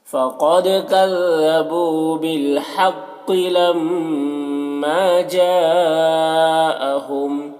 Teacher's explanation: लम्मा मीम मुशद्दद गुन्ना के साथ पढ़ेंगे, अलिफ मद्दा एक अलिफ के बराबर खींचेंगे। जा में मद्दे मुत्तसिल से 3-4 अलिफ के बराबर खींच कर पढ़ेंगे